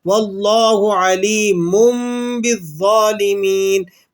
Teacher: تنوین کی آواز کو ہم نے میم کے ساتھ تبدیل کر کے پڑھنا ہے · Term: اقلاب